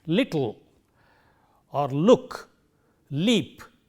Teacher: It stands for the sound L, which we have in a word like little or look, leap, etc. So, this is a lateral sound which is a voiced sound